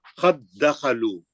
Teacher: ایک ساکن ہے ایک مشدد ہے, ساکن کا مشدد میں ادغام متماثلین ہو رہا